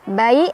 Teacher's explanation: harf lin karena ada ya sukun sebelumnya fathah dibacanya lunak aja.